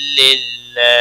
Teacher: اللہ کا لام باریک اس لیے پڑھا جائے گا کیونکہ اس کے پچھلے حرف کے نیچے زیر ہے